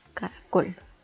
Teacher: Esta palabra está dividida en 3 sílabas y la sílaba tónica recae en la última sílaba